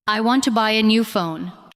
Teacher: The important words are want, buy, new, and phone. The other words support them.